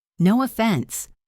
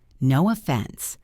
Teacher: Listen to the intonation. It usually goes up slightly.